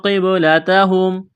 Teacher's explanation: قاف کو موٹا کرنا ہے، با پر قلقلہ کریں گے، با ساکن ہے، تا اور کاف کو باریک کرنا ہے.